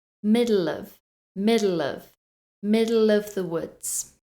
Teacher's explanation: some more linking in this sentence and also a weak shwah sound so the uh sound